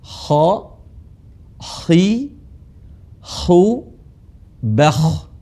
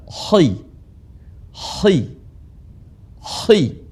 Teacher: Kha sekalipun dia dalam keadaan kasrah, dia dibaca tebal. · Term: huruf kha